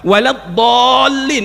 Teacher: mad lazim musaqqal qalimi wajib dipanjangkan enam harakat